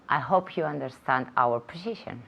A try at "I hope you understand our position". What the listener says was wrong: Good, good.